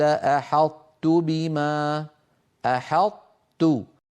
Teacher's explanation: يطبق المتكلم لسانه على طاء غير مقلقلة ثم يجافيه عن تاء متحركة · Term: إدغام ناقص